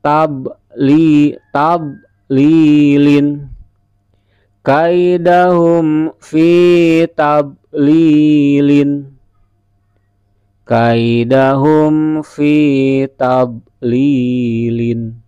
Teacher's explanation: Fa ya, fa ya, ta bo lam ya lam, dibaca fi tab lilin, fi tab lilin. Ingat, bod bukan huruf qalqalah. Jangan sampai ada terdengar mantul.